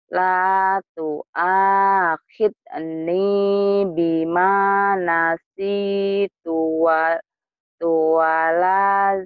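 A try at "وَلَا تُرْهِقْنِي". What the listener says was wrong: Enggak boleh tuwala, nanti kebiasaan. Tuala itu enggak ada artinya. Harusnya dari sini sih. Nasi tuala, enggak boleh tuala ya.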